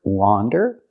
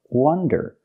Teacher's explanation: we have the first word wander with the open sound like hot and stop and we have the second word w Wonder with a closed short sound like cup and up